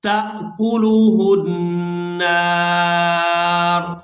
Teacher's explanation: या हमजा ज़बर या, यातियाना बिकुर्बानिन, बिकुर्बानिन ताकुलुहुन नार, यहाँ पर भी ता को हमजा साकिन के साथ मिलाएंगे तो झटके के साथ अदा करेंगे और यहाँ नून मुशद्दद पर गुना करेंगे और आखिर में रा जो है ये साकिन हो जाएगी वक़्फ़ की सूरत में।